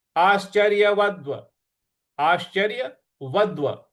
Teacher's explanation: व के बाद जो द और व द्व है उस पर हमको आघात देना है